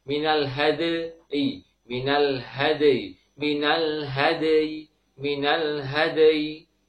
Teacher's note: sempurnakan dal sukun dengan sifat syiddah dan kolkolahnya, kemudian baru ditambah dengan suara ya sukun